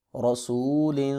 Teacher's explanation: را کے اوپر زبر آ گئی ہے اس لیے اس کو پر کر کے پڑھیں گے